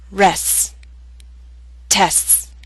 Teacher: In the final 2 words, you need to lengthen the S sound. Make it long so that people can understand the words you're saying.